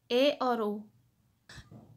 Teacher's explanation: तो जिन स्वरों के उच्चारण में मुख द्वार आधा बंद रहता है, तो अर्ध संवित्र स्वर में जो है ए और ओ। तो अर्ध संवित्र स्वर में जो है मुख द्वार आधा बंद रहता है